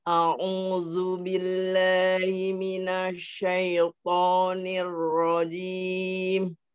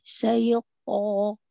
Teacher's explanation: Pokoknya tebelin. Pangkalnya naik, pangkal lidah.